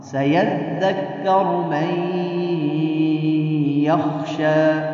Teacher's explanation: تنوین یا نون ساکن کے بعد ینمو میں سے کوئی حرف آ جائے، یعنی یا نون میم اور واو میں سے، تو وہاں ادغام بالغنہ ہوتا ہے. یہاں دیکھ نون ساکن کے بعد یا آیا ہے تو یہاں ادغام بالغنہ ہوگا